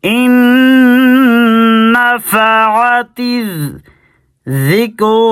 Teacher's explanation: یہاں پہ غنہ ہوگا نون پر